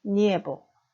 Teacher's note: 즉, 마지막 단어 니에보는 모음이 몇 개 있다라는 거죠. 이, 에, 오 세 개가 아니라 모음은 에, 오 두 개밖에 없습니다. 즉, 에 앞에 나와 있는 이는 자음과 연결돼서 니, 연음인 것입니다.